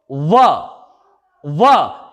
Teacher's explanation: पहले दांत आगे आए और उसके पश्चात हमें ओष्ठों की सहायता लेनी पड़ी। तो इसीलिए व का उच्चारण स्थान दंत प्लस ओष्ठ है। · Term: दंतोष्ठ